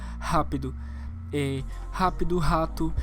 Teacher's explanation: eu gravei com o meu sotaque que tem o som de respiração